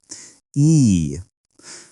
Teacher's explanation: Your tongue is high and tense in your mouth. This sound is longer and has more energy. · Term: long sound